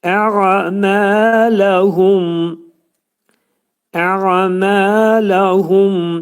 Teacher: Ə'mələhumda demək ayn hərfinin məxrəcini düz çıxartmalıyıq. Boğazın ortasından çıxartmalıyıq.